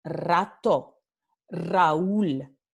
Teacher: cuando una palabra comienza con R, siempre tenemos the rolled R